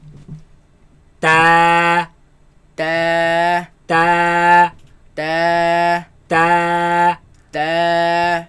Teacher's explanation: this letter comes from the front flat part of the tongue against the roots of the teeth